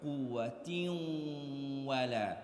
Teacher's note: We have a tanween on a tam marbuta followed by a waw. So we are going to merge into the waw and hold it for the gunnah.